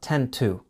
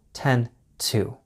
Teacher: When you don't follow 10 with the hour, you don't get the duh sound.